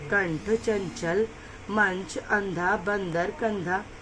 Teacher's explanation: वह शब्द जिनके उच्चारण करते समय नाक से हवा निकलती है उन्हें अनुनासिक अनुस्वर कहा जाता है, जैसे अंकी बिंदी वाले शब्द कंठ, चंचल, मंच, अंधा, बंदर, कंधा, आरोह शब्द।